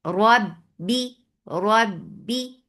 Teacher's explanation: The sound with kasra is light and the sound with the kasra is short.